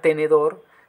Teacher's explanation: la palabra tenedor también es una palabra aguda, su acentuación está en su última sílaba, más termina en R.